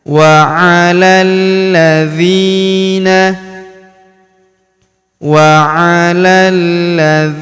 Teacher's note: huruf dzi kita panjangkan dua harakat karena terdapat ya sukun di depannya